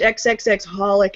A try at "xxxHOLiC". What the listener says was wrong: I think it's just holic. I don't think you're supposed to pronounce the X's. I think it's just pronounced holic.